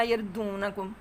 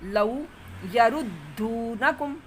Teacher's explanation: غنہ نہیں آنے دینا دو میں، دو ہے دوں نہیں ہے